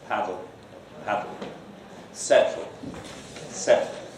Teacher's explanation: the alveolar closure is released by lowering the sides of the tongue. So that if you have something like settle or paddle, there the T or the D is released not by releasing the closure completely, but just by lowering the sides of the tongue. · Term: lateral release